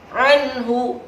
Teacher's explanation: Anhu tidak boleh lama karena ijhar berarti kan jelas. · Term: ijhar halki